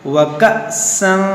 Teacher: یہ حمزہ ساکنہ ہے، اس کو ہم جھٹکا دے کر پڑھیں گے